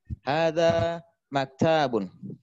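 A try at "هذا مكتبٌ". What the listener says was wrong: Maktabun, pendek. Entahnya jangan dipanjangkan.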